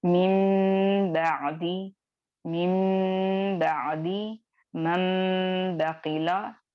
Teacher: जब भी नूने साकिन या तनवीन के बाद अगर हर्फ बा आ जाए तो वहां पे आप नून की आवाज को मीम की आवाज में बदलेंगे या पलटेंगे और फिर उसको अदा करेंगे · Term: इक़लाब